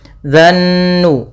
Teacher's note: ada alif lam syamsiyah, yaitu alif lam yang ditulis tapi tidak dibaca. Kita langsung pada lafal zal langsung ke nun.